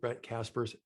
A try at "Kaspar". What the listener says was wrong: Brent Kaspar. I don't know if you have an S on it. Are you saying Kaspars? Kaspar.